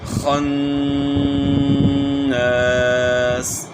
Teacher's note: خا کو جو ہے نا آپ نے گلے کے شروع سے ادا کرنا ہے خا کو، اور یہاں نون میں غنہ کرنا ہے.